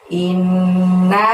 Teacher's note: innya ditahan dan ditekan selama 2 harokat ya, karena ada nun tasydid di situ. Kemudian naknya panjangnya 5.